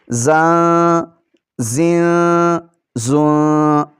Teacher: یہاں پر سیٹی کی آواز نکالتے ہوئے زا کو ادا کریں گے